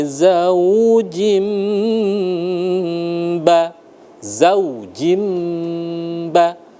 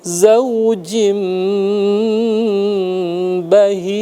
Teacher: Min kulli zawjim ba, zawjim ba, jim ya, kasratain tandanya 2 di bawah bertemu dengan ba, maka berlaku hukum iqlab, ditekan atau ditahan selama 2 harokat dengan bibir yang tertutup